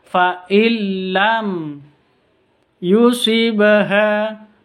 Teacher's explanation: mim sukun bertemu dengan Ya jelas bacanya karena izhar syafawi · nun sukun bertemu dengan lam masuk tanpa dengung bacaan Idgham bila ghunah jadi faillam ditahan faillam disentak seperti itu terus tanpa dengung jangan · fa'il lam disentak seperti itu terus tanpa dengung. Jangan didengungkan. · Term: idgham bila gunnah